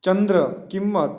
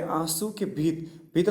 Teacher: ચંદ્ર, કિંમત આદિ બોલતી વખતે જોડાક્ષરની જેમ ઉચ્ચારણમાં થડકો લાગે છે, જે આંસુમાં નથી લાગતો. ચંદ્ર, કિંમત આદિ અનુનાસિક વ્યંજન સૂચક અનુસ્વાર તીવ્ર કહેવાય છે.